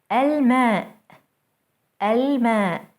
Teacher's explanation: notice how Moon letters allow the L to be pronounced fully